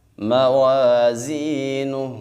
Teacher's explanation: زا میں سیٹی پیدا کریں گے